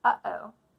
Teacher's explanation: When we say uh-oh, we stop the air with our throat, We don't say oh, that's continuous airflow. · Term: glottal stop